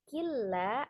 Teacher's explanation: Jadi hanya diidghamkan, ditasdidkan dengan tidak berdengung. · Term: idgham bila gunnah